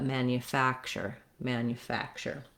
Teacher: we do still have the a vowel also in the first syllable here just like in the word man but i'm not going to hold it a long time not manufacture but manufacture manufacture for the letter u here we · in this word the stress is on the third syllable fact it's going to have that clear a vowel like in black and you're going to want to have length there